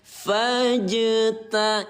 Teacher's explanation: jim yang baris mati bacanya dengan pantul